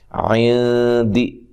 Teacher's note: نون ساکن کا اخفا مع الغنہ ہے، باریک اخفا ہے، اور دال کو لمبا نہیں کرنا۔